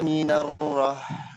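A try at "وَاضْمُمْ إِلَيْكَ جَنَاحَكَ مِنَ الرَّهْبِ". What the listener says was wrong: Minarroh. Rohbe. Ya, Ustadz, di sini waw mum gunahnya masih kurang. Mum ilai sama rohbe.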